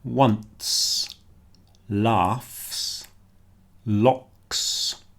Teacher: So words like once, laughs, locks, they all sound like a S at the end